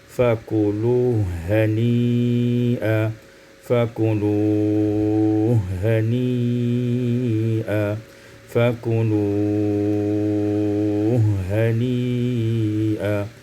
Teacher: Pada ayat yang keempat, fakuluhu hani'a, idghamul ha fil ha, diidghamkan ha pada ha menjadi fakuluhu hani'a